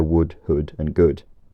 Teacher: In early modern English, many instances of this long oo vowel get shortened to u, and this was especially common before d